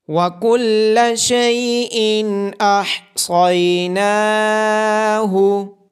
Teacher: تنوین کے بعد حروف حلقی میں سے حمزہ ہونے کی وجہ سے اظہار ہوگا